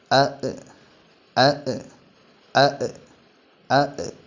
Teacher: അലിഫ് നീട്ടാനുള്ള അലിഫ് അല്ല ഹർക്കത്തുകൾ നൽകപ്പെടുന്ന അലിഫാണ് തൊണ്ടയുടെ അടിഭാഗത്തുനിന്നാണ് അലിഫ് മൊഴിയേണ്ടത് അലിഫ് മൊഴിയുമ്പോൾ ശബ്ദം നീളരുത് കാറ്റ് വരരുത്